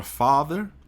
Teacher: a palavra father você vai automaticamente você vai prolongar levemente esse a do father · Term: azinho com dois pontos